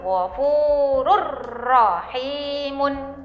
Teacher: masuk ke huruf idgam bilagunnah namun tanpa disertai dengung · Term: idgham bilagunnah